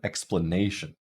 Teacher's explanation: Usually the vowel is a little bit longer, and it's usually not reduced. So if we pronounce the word explanation, that ne is getting primary stress. It's the longest and most prominent syllable in the word